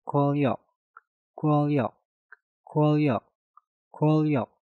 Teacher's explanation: Nah, diingat untuk aturan yang ketiga, ketika kalian melihat sebuah kata yang diakhiri dengan nien, setelah itu kata di depannya diawali dengan real, maka niennya kita rubah menjadi suara real